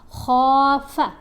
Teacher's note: خواہ کو ہم نے موٹا بھی پڑھا اور ایک الف جتنا لمبا پڑھا، کیونکہ خواہ کے اوپر زبر ہے، ساتھ الف ہے، تو یہ حرف مدہ ہے۔